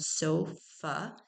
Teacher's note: So it's part of this second syllable, which is an open syllable, but because that A is coming at the end, it's going to be schwa